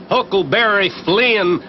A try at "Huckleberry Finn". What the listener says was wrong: Finn! He was Huckleberry Finn, not Flynn. Ain't it the decent thing to pronounce the poor dead loafer's name right?